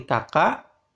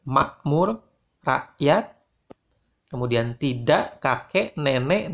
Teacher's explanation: perwakilan huruf fonetik bagi huruf K yang berfungsi sebagai bunyi hamzah